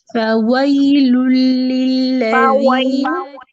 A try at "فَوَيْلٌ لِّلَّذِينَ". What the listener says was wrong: واؤ کا مخرج ٹھیک کریں.